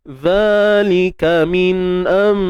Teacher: Kita tukarkan bunyi nun kepada mim. Baik, cuma kaedahnya ialah kita tutup bibir bersahaja. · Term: iqlab